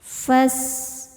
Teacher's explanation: namanya shofir ada desisan seperti ular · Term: sofir